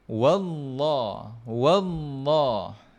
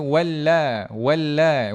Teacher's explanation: kita tengok wau ini berbaris atas fathah maka kita baca dengan tebal · Pada lam pada kalimah Allah itu lam itu dibaca dengan tebal. Ha kalau sebelumnya baris atas ataupun baris depan. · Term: tafkhim